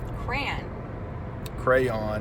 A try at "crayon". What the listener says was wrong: No, just one syllable. Crayon.